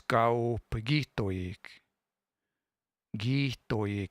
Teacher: This will kind of smush together into like a long I sound.